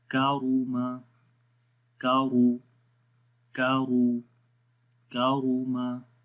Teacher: کاف کو باریک پڑھیں گے, را کو موٹا پڑھیں گے